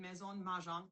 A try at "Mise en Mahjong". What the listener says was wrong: Mise en. Mise en Mahjong.